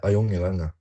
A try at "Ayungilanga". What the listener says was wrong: Do exaggerate the high tone. And make sure not to round your vowels to an O sound. U is oo, a narrow sound in Greenlandic.